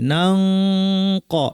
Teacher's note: আমরা পড়ব নাং ক, এবং এই ক্ষেত্রে যেহেতু কফ ভারী, এই জন্য আমাদের গুন্নাটাও ভারী হবে, নাং ক, এভাবে আমরা পড়ব।